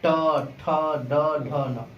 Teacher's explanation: मूर्धा होता क्या है? यानी हमारा तालु और दांत का जो मसूड़ा है, इन दोनों के बीच में बोला जाता है ट ठ ड ढ न